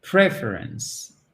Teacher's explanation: vous mettez bien accent tonique sur la première syllabe